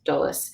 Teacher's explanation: And then when you have da plus yolis, which is information, so dolis, that D attaches to yolis. So do plus yolis equals dolis.